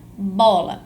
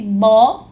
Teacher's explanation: a sílaba bom então eu vou chamar essa sílaba mais forte essa marcação da fala esse bo mais forte eu vou chamar isso de acento tônico